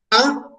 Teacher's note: A, obviamente, es una vocal abierta.